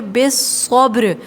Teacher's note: یہاں با ساکن ہے اور با بھی حروف قلقلہ ہے تو یہاں پر بھی قلقلہ ہوگا، آواز پلٹ کر آئے گی